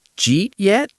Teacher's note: That is the ultimate smoosh. It's basically one syllable. It sounds like a bird chirping.